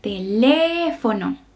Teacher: la palabra teléfono. El acento está en la segunda sílaba. Entonces vamos a leerla teléfono. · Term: sílaba tónica